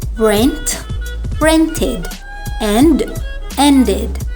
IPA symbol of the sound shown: id